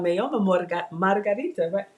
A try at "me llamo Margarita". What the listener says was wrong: Me llamo. Yeah, it's double L. You gotta pronounce the double L harder.